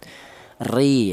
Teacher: Di sini ada huruf ro di mana huruf ro ini berharakat kasrah. Ini dibaca tarkik atau dibaca tipis ya.